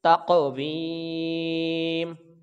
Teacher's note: آگے تا کو قاف کے ساتھ ملائیں گے تو یہ حروف قلقلہ ہے، جنبش کے ساتھ آواز لوٹ کر آئے گی، اور واو کو یا کے ساتھ جب ہم ملائیں گے تو یہ یائے مدہ ہے، اس کی لمبائی 1 الف کے برابر ہوگی۔ میم کے نیچے 2 زیر نہیں پڑھیں گے کیونکہ یہاں پہ وقف ہو جائے گا، تو میم ساکن ہو جائے گا